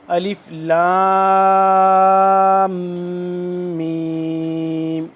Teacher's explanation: اس کو لام جب میم کے ساتھ مل رہا ہے، ان دونوں کے درمیان پھر جب میم کے اوپر آگے شد آ گئی ہے تو یہاں پہ غنہ ہوگا، یعنی کہ آواز کو تھوڑی دیر ناک میں لے کے جانا